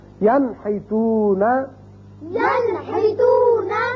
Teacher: نون ساکن کے بعد ہا آ گیا تو اس کو ہم ظاہر کر کے پڑھیں گے نون کے مخرج کو